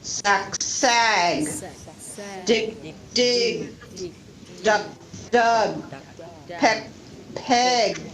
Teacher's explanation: Or also with k, g, the g sound will make the vowel longer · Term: longer vowel sound